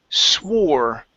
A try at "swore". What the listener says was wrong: Give me an R sound here at the end. You had said swa. Okay, close your mouth just a little bit. Use your tongue to pronounce that R.